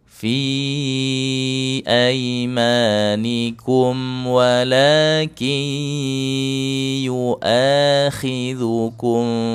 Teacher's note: fi aimanikum walakin yuakhidzukum bimaa kasabat qulubukum ya wala dua harakat wala walaki ada nun sukun di depannya ada huruf ya idgham bighunah dimasukkan nun sukunnya ke dalam huruf ya lalu disertai dengan dengung dua harakat